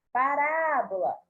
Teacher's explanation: a sílaba tônica está na antepenúltima sílaba